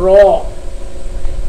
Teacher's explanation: যে ধ্বনি উচ্চারণে জিহ্বা শ্বাসবায়ুকে বারবার বাধা দিতে থাকে এবং কম্পন সহ ধ্বনি নির্গত হয়, যেমন হচ্ছে র। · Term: কম্পিত ধ্বনি